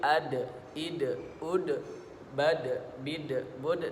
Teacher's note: huruf dal itu dikeluarkan dari ujung lidah bertemu dengan langit-langit di bagian depan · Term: huruf qalqalah